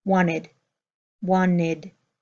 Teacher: this tea in the middle of wanted is held back